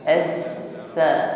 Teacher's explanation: tidak berdesis sebagaimana huruf sin ya. Jadi hanya nafas saja yang mengalir.